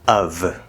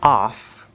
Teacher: the preposition of which uses a v sound in comparison the preposition off which is spelled with two f's uses the f sound